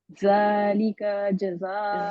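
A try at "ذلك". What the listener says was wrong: ذالک ذال کو اور باریک کرے ذال کو اور نرم کریں. سوری باریک نہیں جس کی جو اس کی ہے نا جگہ نکلنے کی ادھر سے نکالیں.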